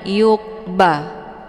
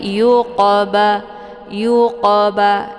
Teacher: ini merupakan huruf qof yaitu huruf qalqalah. Jadi qaf ini cara bacanya dipantulkan